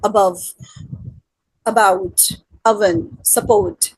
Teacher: the tongue is in a more central position in the mouth